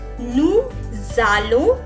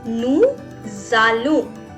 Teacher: Why I'm making a z sound? Because s is followed by a vowel.